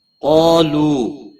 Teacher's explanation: قاف حروف مستعلیہ میں سے ہے، پر پڑا جائے گا۔ مستعلیہ کے بعد جب الف ایک ہی کلمے میں آتا ہے تو وہ بھی پر پڑا جاتا ہے۔